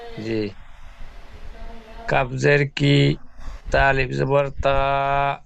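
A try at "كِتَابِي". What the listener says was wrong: তিনটে একসঙ্গে নয়, ছাড় ছাড় করে। প্রথমে প্রথমে দুটো অক্ষর আগে উচ্চারণ করেন, তারপরে তৃতীয় অক্ষর জয়েন করেন। বায়াজের বি হলো না, বায়াজের বি হলো না। বাজের বি আর বায়াজের বির মধ্যে পার্থক্য হলো না।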